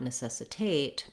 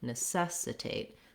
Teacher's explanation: we do have the clear vowel but it's still a short unstressed syllable